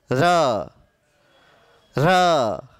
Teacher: दंत। आपकी जीभ दांत को छुएगी र बोलोगे तो। र र हल्की सी टच कर रही दांत को।